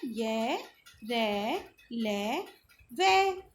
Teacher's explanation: तो उच्चारण के समय जिह्वा मुख के किसी भाग को स्पर्श नहीं करती। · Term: अंतस्थ व्यंजन